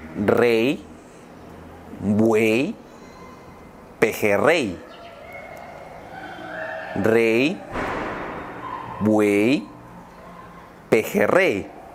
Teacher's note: the other sound of the letter Y when it's at the end of a word. And I will have to say that it's the same sound of the vowel I, which also would be something similar to English.